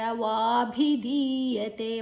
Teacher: ವಾಭಿಧೀಯತೆ ವಾ ದೀರ್ಘಾಕ್ಷರ. ಭೀ ಮಹಾಪ್ರಾಣ ಧೀ ಮಹಾಪ್ರಾಣ ಧೀ ದೀರ್ಘಾಕ್ಷರ ಕೂಡ. ಯತೆ ತೇ ದೀರ್ಘಾಕ್ಷರ.